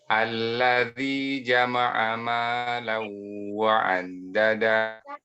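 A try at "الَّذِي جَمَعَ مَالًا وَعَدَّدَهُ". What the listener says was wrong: Naam, hakadha. Mumtaz jiddan, masyaallah.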